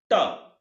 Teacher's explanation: ट बोलते समय ठीक उसके ऊपर तालु से ठीक ऊपर जीहवा स्पर्श कर रही है। तो वही मूर्धा है।